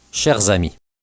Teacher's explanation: Notice that the S of cher and the A of ami produce the sound za, even though the S of cher is silent when not followed by a vowel sound. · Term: la liaison